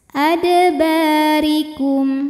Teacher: huruf ro dibunyikan secara tarqik karena berbaris kasrah maka ro dibaca tipis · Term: tarqiq